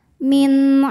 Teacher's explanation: nun sukun menghadapi huruf halq atau huruf tenggorokan yaitu Ain maka Nun dibaca dengan jelas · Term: izhar halqi